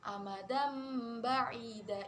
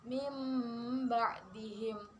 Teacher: Menurut istilah artinya jika terdapat nun mati atau tanwin bertemu dengan huruf iklab yaitu ba dibaca membalik menjadi mim. Jadi ba itu nanti dibaca mim.